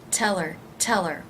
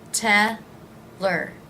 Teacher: if you drop the H you have to be certain that you link it to the word before tell her tell her it's almost like it becomes one word